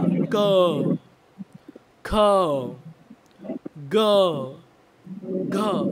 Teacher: हा आवाज कुठून येतोय कंठातून कंठातून येतोय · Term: कंठव्य